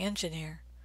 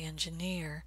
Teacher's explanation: they're gonna stress the vowel in the last syllable · You might be saying engineer, but Americans will say engineer. They're going to stress the vowel in the last syllable, engineer.